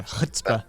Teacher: when you say chutzpah, for instance, it comes from the back of the throat